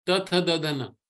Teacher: Then ta is just your tongue touching, right? Just a lingual, tongue touching the back of the teeth.